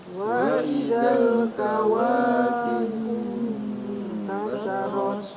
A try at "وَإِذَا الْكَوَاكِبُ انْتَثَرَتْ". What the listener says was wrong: Ya, hati-hati tasa di sini setelah ta huruf sa. Jadi ujung lidahnya nampak keluar sedikit. Tasarat ta sa. Tasa gitu ya. Wa idzal kawakibu tasarat.